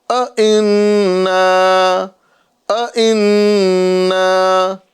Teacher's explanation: نون مشدد ہے، یہاں پر ایک الف کا گنہ کریں گے